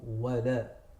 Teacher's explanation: Very important in ولا الضا is that you don't make the lam heavy. So don't go wala, go wala, wala الضا.